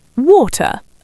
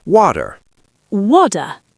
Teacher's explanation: It sounds like a D. It's a flap D, and he hits the R hard.